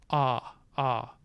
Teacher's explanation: for a purely oral vowel um raise the velum ah ah you can tell that there's nothing going through the nose because ah ah sounds the same whether i plug my nose or not